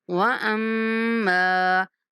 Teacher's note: میم پر غنہ کرتے ہوئے میم کو تھوڑا کھینچ کے پڑھیں گے